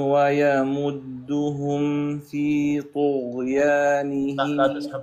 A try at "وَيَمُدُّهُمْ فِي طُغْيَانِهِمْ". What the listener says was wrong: الطاء لا تسحب ضمه الطاء الى الغين وتقول طو